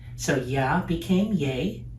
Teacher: the ya kind of pulled the low vowel ah upward to a higher position